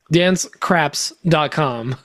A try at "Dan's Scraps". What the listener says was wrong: Sorry, you're emphasizing it in a very East Coast way. It's Dan's scraps.